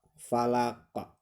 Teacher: Jadi harus memantul ya ketika kalian mengucapkan qaf yang disukunkan. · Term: qalqalah